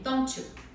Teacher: A gente adiciona um ch no meio, don't you.